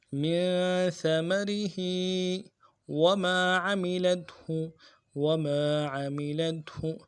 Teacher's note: من ثمرہ میں سا کو باریک کریں گے اور را کے نیچے زیر ہے، باریک کریں گے ، ہا کے نیچے کھڑی زیر ہے، ایک الف دال میں · ہا کے نیچے کھڑی زیر ہے، ایک الف دال میں کھینچیں گے · عین کو واضح کریں گے، لام کو تا کے ساتھ ملانا ہے اور ہا کے پیش کو نرمی سے پڑھیں گے بغیر کھینچے